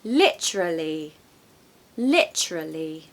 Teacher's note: So stress the first syllable